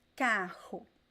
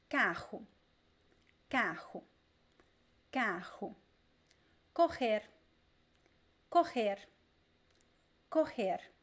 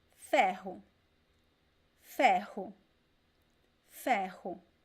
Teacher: it always sounds like the strong R, o R forte, just like the same pronunciation you find in the R at the beginning of words